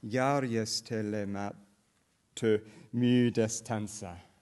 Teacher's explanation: The Finnish stress pattern involves an invariant initial primary or main stress, all right? And then it is an alternating stress language. There is, roughly speaking, alternating stress going from left to right, or as phonologists would call it, binary alternation.